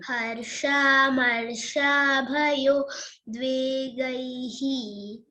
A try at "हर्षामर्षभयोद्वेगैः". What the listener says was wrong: Harsha marsha. That's all. Don't make it a long vowel is not there. This is short one. Harsha marsha bhayo dvegaihi.